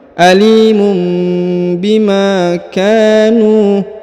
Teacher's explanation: huruf ka dipanjangkan 2 harokat karena di depannya terdapat alif